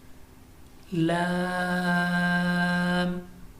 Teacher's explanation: زبان کا کنارہ اور زواحق سے ثنایا تک کے مسوروں سے ادا ہوتے ہیں. یعنی زبان کا کنارہ اور دانتوں کی جڑ کے تالو کے جانب والے حصے سے ہم ان کو ادا کرتے ہیں. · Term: حروف طرفیہ